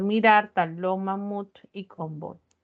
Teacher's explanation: aquellas que tienen la mayor fuerza de voz en la última sílaba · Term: palabras agudas